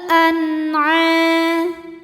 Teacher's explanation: Karena nun sukun menghadapi huruf halqi atau huruf tenggorokan yaitu ain. Maka nun sukun kita bunyikan dengan jelas · karena ada alif sebelumnya fathah maka dipanjangkan ainnya dua harakat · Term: izhar halqi